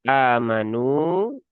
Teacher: hanya ini dibaca dua harokat ya. Ini mat badal ya, bukan mat asli ya.